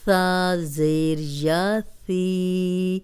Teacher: سا کو نرم پڑھیں گے، سیٹی کی آواز نہیں آنی چاہیے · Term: نرم حرف